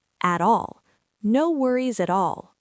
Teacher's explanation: We link the T into the A.